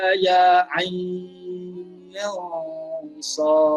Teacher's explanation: Ain itu yang pertama dipanjangkan 6 harakat. Yang kedua dibaca dengan 4 harakat.